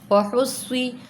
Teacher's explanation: صاد میں سیٹی بھی نکلے گی اور پر بھی پڑھیں گے